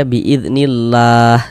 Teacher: huruf lam jalalahnya itu kita baca kita baca tipis kita baca tarkik. Sehingga ini kita baca nillah jangan baca nillah biidnillah jangan. · Jika sebelum lafaz Allah sebelah sininya ini ada baris kasroh, ada lafaz Allah, sebelumnya ada baris kasroh nih, baris di bawah nih, maka lafaz Allahnya itu huruf lam jalalahnya itu kita baca kita baca tipis, kita baca tarkik, sehingga kita baca nillah, jangan dibaca nillah, biiznillah, jangan, tapi dibaca biiznillah seperti itu ya, tipis gitu ya.